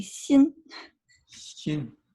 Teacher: x is actually in between an sh and an s